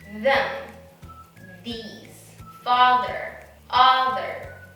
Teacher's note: to make the voice sound of th you have to put your tongue between your teeth the same position as the voiceless sound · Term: voiced pronunciation of th